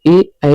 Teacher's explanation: ए ऐ जो है वह कंठ तालव्य से निकलता है।